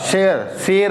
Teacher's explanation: जब जीभ को थोड़ा पीछे ले जाएंगे तालू की तरफ, जब वहां से प्रेशर लगाएंगे तब हमारा निकलता है ये श